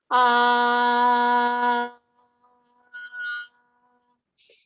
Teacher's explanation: most of that sound energy is coming out of the mouth, and the soft palate is actually raised up and it closes off the nasal cavity